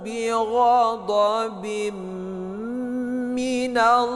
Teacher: Bighadobim kasratain bertemu dengan mim. Ini adalah idgham ee bighunah. Jadi dibaca berdengung dua harakat.